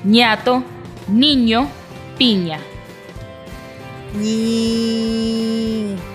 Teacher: un poco menos la boca que con el de la n pero también el aire Sale por la nariz